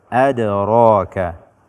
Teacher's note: Sebagaimana kita ketahui bahwa dal adalah salah satu daripada huruf qalqalah yang ketika dia sukun, suara kita memantul membacanya